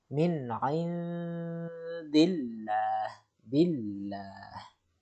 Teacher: Tidak ada penekanan yang terlalu menonjolkan pelafalan ketebalannya, tapi justru sebaliknya ditipis ya, ditipiskan pelafalannya.